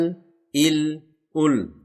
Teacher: लाम को अदा करने के लिए जबान की नोक को सामने ऊपर के दांतों के मोड़ों से मिलाना होता अल इल उल यह लाम हिलना नहीं चाहिए यह हर्फ कलकल · یہ لام ہلنا نہیں چاہیے، یہ حرف کلکلہ نہیں ہے۔ · مخرج نمبر 8 لام۔ لام کو ادا کرنے کے لیے زبان کی نوک کو سامنے اوپر کے دانتوں کے مسوڑوں سے ملانا ہوتا۔